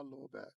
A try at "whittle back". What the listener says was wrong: Whittle. Whittle back. Whittle back. Yeah, you say it with a W.